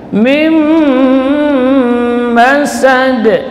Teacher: Mim masad, dan qalqalahnya langsung, tidak boleh ditahan. Masad, tidak boleh seperti itu, tapi langsung. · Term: qalqalah kubra